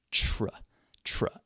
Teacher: make a CHR sound like CH plus r